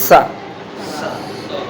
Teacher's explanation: दंती माने हमारी जीभ जब दांतों को टच करते हुए सा बोलेगी तो वो दंती सा कहलाएगा।